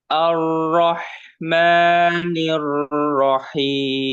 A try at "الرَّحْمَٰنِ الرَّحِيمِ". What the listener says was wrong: Jangan terlalu panjang mimnya. Ar-Rahmanir Rahim.